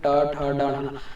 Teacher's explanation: जीभ है थोड़ा से राउंड होके नाक के नीचे के हिस्से में जाके टकरा रहा है, उसी स्थान को मूर्धा कहते हैं।